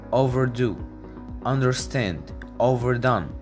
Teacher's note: Stress the second part of the compound verbs